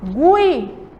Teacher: eu tenho o som aí predominante do I e o U quase não aparece, então é um som fraco. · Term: semivogal